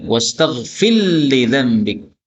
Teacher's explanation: Maka ra-nya hilang jadi lam. Mim ketemu mim. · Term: idgham